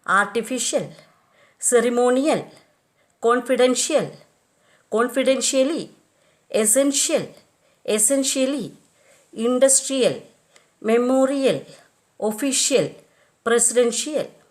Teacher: words ending in IAL, IALLY have the primary accent on the syllable preceding the suffix.